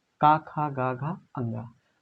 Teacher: कंठ माने कंठ से उच्चारित होते हैं, उसमें आते हैं प्रथम वर्गीय व्यंजन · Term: कंठ वर्ण